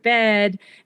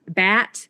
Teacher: The front vowels, which are things like the word bed and the word bat, get pronounced with slightly lower backer vowels. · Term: California vowel shift